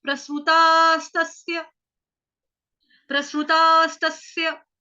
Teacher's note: अब यहाँ पे जो आपका आघात है आएगा तो वही डबल स आएंगे, लेकिन उसका जो उच्चारण होगा वो माइल्ड होगा। आधे स का दूसरी बार जो उच्चारण होगा वो माइल्ड सा होगा। क्यों? क्योंकि आ की जो मात्रा है वो दीर्घ है, लंबी मात्रा होने की वजह से वहां पे आपका जो आघात है वो प्रॉपर वे में सुनाई नहीं देगा।